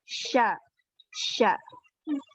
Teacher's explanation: Karena dia ketika kita mengucapkan huruf shin, itu banyak angin yang keluar. Jadi anginnya itu menyebarnya di seluruh mulut. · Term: tafashi